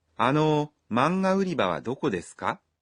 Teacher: This sentence is a question with か at the end, so be sure to say it with a rising intonation.